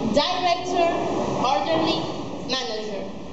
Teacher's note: As you can hear, the stress is in the first syllable.